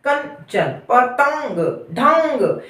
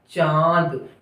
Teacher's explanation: अनुनासिक की बात करेंगे यानी चंद्र बिंदु की बात करेंगे तो यहाँ मुख और नाक दोनों बराबर वर्क करते हैं